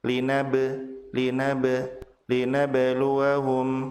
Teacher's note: Ba dibaca memantul karena ba sukun dan ba memiliki sifat qalqalah, yaitu dipantulkannya huruf ba apabila dalam keadaan sukun.